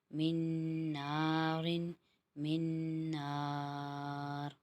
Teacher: نون ساکن کے بعد اگلا حرف نون آ گیا جو کہ یمون میں سے ہے، اس لیے یہاں پر ادغام بالغنہ کیا